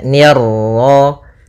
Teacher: Ni tipis ketemu ro yang ro tafkhim. Ro tebal maka nirro.